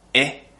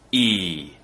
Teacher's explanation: The most noticeable difference is the second sound is a long vowel and I smile a little bit more. The reason I'm smiling more is actually because my tongue is going higher in my mouth.